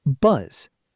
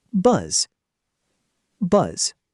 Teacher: focus on sustaining the voiced vibration all the way through the final Z sound